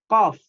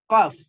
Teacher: pangkal lidah bertemu langit-langit atas. Nah, pangkal lidah posisinya di paling belakang